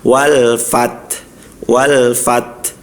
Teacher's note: Tahan fat ketika dia ee sukun lalu alirkan hamsnya, alirkan suaranya ee nafasnya. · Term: sifat syiddah